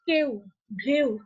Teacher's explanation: ফেলছি একটি স্বরধ্বনি আর একটি অর্ধস্বরধ্বনি মিলে এই যে কেউ ঢেউ এই মাঝখানে কিন্তু আমরা একটা অর্ধস্বরের মতন পাচ্ছি যেটা এ এবং উ এর মতন করে একসাথে উচ্চারিত হচ্ছে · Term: দ্বিস্বর